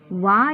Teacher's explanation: ವ ಎಂಬ ಅಕ್ಷರವು ದಂತ ಮತ್ತು ಓಷ್ಠ್ಯಗಳ ಸಹಾಯದಿಂದ ಹುಟ್ಟುವುದರಿಂದ ದಂತೋಷ್ಠ್ಯ ಎಂದು ಕರೆಯುತ್ತೇವೆ